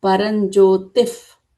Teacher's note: If you apply the visarga rule, this becomes param jyotif because visarga is followed by pa sound